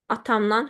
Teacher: Mən çıxışlıq halın şəkilçisini əlavə etdim. Tələffüz zamanı dan şəkilçisi nan kimi tələffüz olundu.